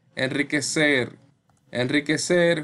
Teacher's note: suena como vibrante múltiple pero no está entre vocales